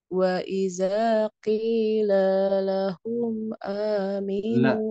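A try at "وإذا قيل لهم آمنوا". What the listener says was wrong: La-nya masih panjang. La-nya jaga, jangan sampai panjang. La-lahum. Pelan-pelan saja. Wa idza qila lahum aminu.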